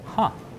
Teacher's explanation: the last way to use huh is by itself, like this, with falling intonation. Huh. This is a sound we make when something is slightly interesting or surprising.